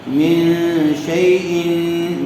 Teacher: دیکھیے من غنّے کے ساتھ اخفا ہوگا